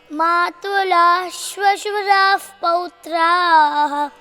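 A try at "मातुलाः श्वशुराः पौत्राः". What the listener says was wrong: Matulaha. Then comes after the Visargam Shvashura. Sha. So it should be given a stress. It should be like two sha. Sh. Matulashvashurah Pautrah. Again, before Pautraha, that uf sound should be there.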